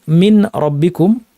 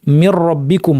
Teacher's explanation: তাহলে দুইটা কাজ একটা কাজ হচ্ছে প্রথমে নুনটাকে র বানানো হবে। এবং এই রকে পরের র এর সাথে যুক্ত করে তাশদিদ যুক্ত একটি রয়ে পড়া হবে।